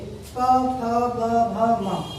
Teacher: पा वर्ग में क्या होता है, ये हमारे ओष्ठ या होठ को स्पर्श करेगी, होठ आपस में स्पर्श करेंगे। प फ ब भ म, प्रत्येक बार हमारे होठ जो है आपस में मिलेंगे